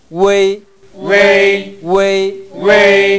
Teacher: 우가 정확하게 발음되고 에이 발음이 이어집니다